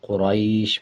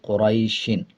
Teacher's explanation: جب وقف کریں گے یعنی آیت کمپلیٹ کریں گے تو دونوں زیر کو سائلنٹ کر دیں گے اور شین کی آواز کو آدھا پڑھا جائے گا، قریش پڑھا جائے گا، اور جب وقف نہیں کریں گے تو پڑھیں گے قریشن۔